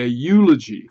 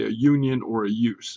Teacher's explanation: seems to be pronounced with a y sound a consonant sound at the beginning of the word